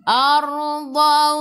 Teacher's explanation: Sebelum ra ada baris atas kena baca dengan tebal, tafkhim.